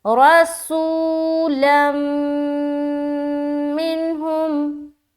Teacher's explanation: यहाँ पर हो गया इदगाम नाकिस का कायदा। गुन्ने के साथ इदगाम करेंगे, ये कहलाती है इदगाम नाकिस।